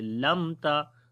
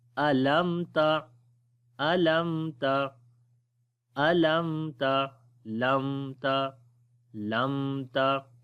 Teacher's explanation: तो इन दोनों के दरमियान वाली जो पोजीशन होती है वो तवस्सुत की होती है यानी कि दरमियानी। ना तो लंबा होगा ना ही एकदम आवाज़ बंद हो जाएगी मीम की